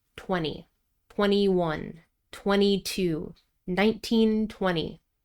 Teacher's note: in American English, we typically drop the T in an unstressed syllable when it comes after an N in a stressed syllable